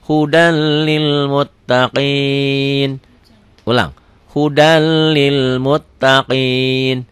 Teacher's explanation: Idgham tanpa dengung. Hudal masuk aja melebur. Tulisan dan bacaan beda. Ditulisnya ada n-nya, dibacanya n-nya hilang.